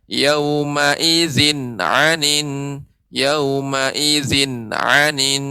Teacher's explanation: tanwin bertemu dengan ain, ini namanya hukumnya izhar, maka tidak boleh lama. Tadi umum membaca yauma idzin anin, seharusnya yauma idzin anin, yauma idzin anin.